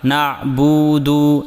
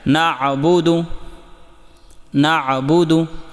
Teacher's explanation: با اور دال کی پیش کو لمبا ہونے سے بچائیں، یعنی ایسے نہیں کرنا، نعبدو ایسے نہیں پڑھنا، بلکہ ایسے پڑھنا ہے نعبدو، نعبدو۔